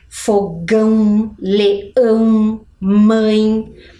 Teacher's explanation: Pode ver como a gente consegue sentir o som saindo pelo nariz · Ele é bem nasal, né? Quando a gente usa o tio, parece que o som sai ali pelo nosso nariz